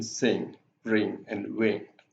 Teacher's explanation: the back of the tongue raises to the soft palate, and it blocks the air passage so that the air goes through the nose. It's a nasal consonant. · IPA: /ŋ/